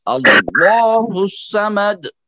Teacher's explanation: موٹا پڑھیے، لام جلالہ ہے یہاں پہ